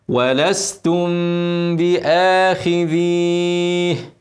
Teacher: الميم مش عليها تشكيله عشان بعدها حرف الباء فاعمل لها اخفاء شفوي وغنه حركتين ميم ساكنه بعدها ب اخفاء شفوي شفوي شفوي ولستم ولستم ولستم